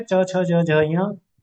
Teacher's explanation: तालु में च वर्ग पूरा का पूरा है।